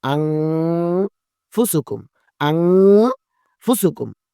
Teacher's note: নাকের বাঁশি হইতে লুকাইয়া, নাকের বাঁশি হইতে লুকাইয়া গুন্না উচ্চারণ করে পড়তে হয় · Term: ইকফা গুন্না